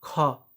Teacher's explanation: ख हवा निकला, ज्यादा ताकत लगा, तो ये महाप्राण हो गया।